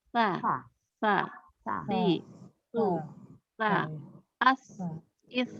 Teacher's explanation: Sa yang ujung lidah menempel ke ujung gigi seri paling atas.